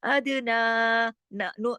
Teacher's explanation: फिर देखिए अदना, अदना दाल पे कलकला क्योंकि दाल जज्म के साथ है, दाल कुतुबिन जद्दिन का हर्फ है। अदना ना, ना को क्यों खींचा, ऊपर खड़ी जबर भी ऊपर मद भी है